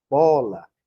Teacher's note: Bola, o A aqui foi fraco, o O é que foi mais forte.